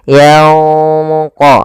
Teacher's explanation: Cara membaca ikhfa yaitu samarkan suara nunnya kepada huruf qof yang ditebalkan